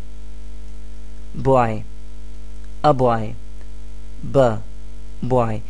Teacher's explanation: the initial sound does not come from the throat, but it is produced using your lips. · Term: consonant sound